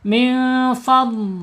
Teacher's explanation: karena dhad ini mempunyai sifat istitalah itu ada tambahan aliran suara ya, aliran suara tambahan, nggak boleh berhenti, nggak boleh fal nggak boleh pakai huruf dzal, nggak boleh huruf dha, harus huruf dhad di dalam.